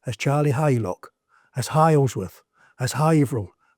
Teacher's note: Suffolk and Norfolk we resonate at the front of the mouth and we are two of the very very few accents that pronounce the letter H